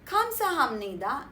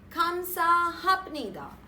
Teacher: When a syllable ends with p and is followed by a syllable that begins with n, the p is pronounced as m.